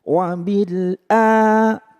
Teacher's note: Wabil a, panjang. Karena hamzahnya terpisah dengan alifnya.